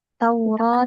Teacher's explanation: Taurah tadi baca 2 harokat. Roknya tafhim dibaca tebal.